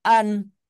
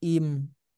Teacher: Ketika nun sukun dan tanwin bertemu huruf hijaiyah, maka itulah yang menjadikan apa istilahnya berubahnya bacanya itu gitu. Karena bertemu dengan huruf ba, maka jadi berubah jadi mim. · Oh, berarti ketika nun sukun ketemu ba itu jadi iklab. Iklab itu mengubah nun sukunnya menjadi mim